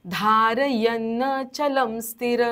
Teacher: शेवटचा जो विसर्ग आहे तो पूर्ण बोलायचा आहे